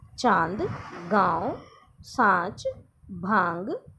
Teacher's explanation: अन्य नासिकीय ध्वनियों की ही तरह इनके उच्चारण में भी वायु मुख के साथ साथ नाक से बाहर निकलती है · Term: अनुनासिक